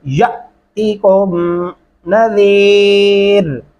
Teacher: अलिफ के ऊपर जब भी जज़म आएगा वो हमजा की आवाज में पढ़ा जाएगा झटके से।